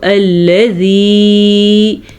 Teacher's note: زا نہیں ہے یہ ذال ہے تو اس کو الذی، یہ بھی نرمی سے پڑھا جاتا ہے